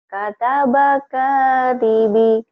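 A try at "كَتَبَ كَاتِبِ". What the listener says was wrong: T-nya yang jelas. Katabakatibi. Ini bacaan panjang sama pendek. Ini pendek, ini panjang. Katabak pendek semua. Kata bak katibi kanya panjang.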